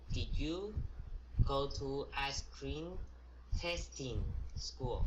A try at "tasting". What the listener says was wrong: Tasting, not testing, okay? It's two different words.